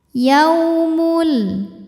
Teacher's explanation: huruf lin sebab ada waw mati didahului harokat fathah. Cara bacanya dilembutkan atau dilunakan.